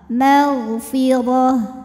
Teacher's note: huruf r kita bunyikan secara tafkim sebab barisnya ha barisnya di atas ya maka rnya tebal magfiroh tak marbuah apabila berhenti jadi ha sukun ya Ha gede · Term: tafkhim